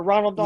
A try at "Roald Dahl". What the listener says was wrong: Yes, rolled. No, it's ROALD. There is no N in there.